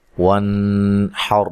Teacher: واو کو ادا کرتے ہوئے ہونٹوں کو گول کرنا ہے، اور یہاں نون ساکن کا اظہار ہے، غنہ نہیں کریں گے، وانحر نہیں کریں گے، وانحر، یہ بھی را موٹی ہوگی۔